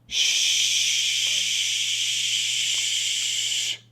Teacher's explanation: So the SH sound is one long continuous breath of air. A little bit like when we want to ask someone to be quiet, we say shh.